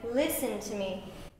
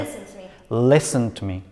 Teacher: The lis is stretched and long.